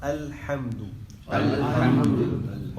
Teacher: اب حمزہ کا یہ جو حمزہ ہے اس میں عین کی آواز نہیں آئے گی الحمد میں